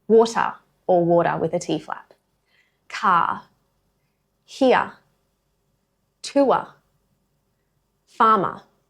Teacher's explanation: All of those words have a written R, but none of them are pronounced. What you hear instead is a vowel sound that's been shaped by where the R would have been. · When R appears at the end of a word or before a consonant sound, we don't pronounce it.